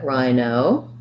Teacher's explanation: first syllable stress there